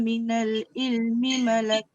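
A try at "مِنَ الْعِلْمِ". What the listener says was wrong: Sikit lagi ain tu masukkan. Minal il. Dia jangan minal il. Minal il dia jadi hamzah.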